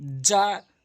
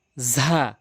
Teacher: জিমটি জিব্বার মাঝখান থেকে তালু, উপরের তালু, আর হচ্ছে ঝাটি জিব্বার আগা, উপরের নিচে দুই দাঁতের আগা।